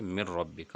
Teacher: ہم نے نون اور را کا ادغام کیا تو یہ دونوں حروف یہاں بغیر غنّہ کے ہیں، یہاں من ربک نہیں بلکہ مر ربک ڈائریکٹ پڑھا جائے گا۔ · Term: ادغام بلا غنّہ